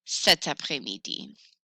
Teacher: Notice I have added a T for liaison purposes to make it sound smooth.